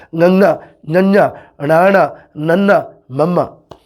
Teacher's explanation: ਜਦੋਂ ਇਹਨਾਂ ਅੱਖਰਾਂ ਨੂੰ ਆਪਾਂ ਬੋਲਿਆ ਆਪਣੀ ਆਵਾਜ਼ ਨੱਕ ਰਾਹੀਂ, ਨਾਸਾ ਰਾਹੀਂ ਆਉਂਦੀ ਹੈ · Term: ਅਨੁਨਾਸਿਕੀ